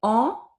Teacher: I would open my mouth and it kind of like sound like an A sound in French, which is a, but coming through the nose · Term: nasal sounds